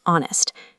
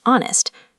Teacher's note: It begins with the consonant h, so spelling suggests a, but the h is silent. Spoken, it's honest.